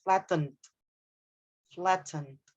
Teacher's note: Do remember when you are using if you are going with the American pronunciation, the T would be D, flatten. But if you are using the British pronunciation, then you need to say the T clearly